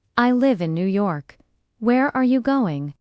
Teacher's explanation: in American English, falling intonation, statements, and wh questions.